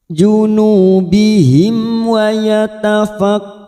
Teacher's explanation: mim sukun bertemu wau Idhar syafawi kita baca jelas tanpa mendengung